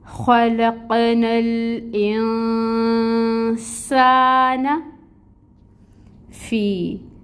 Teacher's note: نون کے اوپر ہم نے اخفا کرنا ہے، یہ اخفا ہوگا 2 حرکت کے برابر۔ سین میں سٹی لائیں گے، اس کی صفت ہے، اور اس کے اوپر کھڑی مد ہے، 2 کاؤنٹس کے برابر پڑھیں گے۔